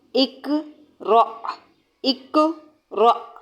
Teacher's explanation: قاف پر قلقلہ، ہونٹوں کو فلیٹ کریں اور پھر بولیں اکو را